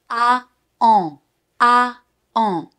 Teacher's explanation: From the A sound, you have to bring your tongue backwards like always, but most importantly, you have to bring your lips forward. · C'est très important d'avoir les lèvres bien en avant, parce que sinon, ça sonne plutôt comme un un. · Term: sound AN, son AN